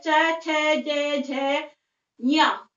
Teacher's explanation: तो जो हमारी जीभ है वो कहाँ पे टच होती है? तालु के ऊपर टच होती है जब हम इनका उच्चारण करते हैं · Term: च वर्ग